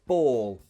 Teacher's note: for this word ball for the vowel sound nothing changes it's one flat sound